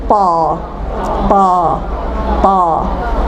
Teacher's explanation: او کی آواز ہی نہیں آئے گی، اس میں آواز آئے گی آ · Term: حرف طا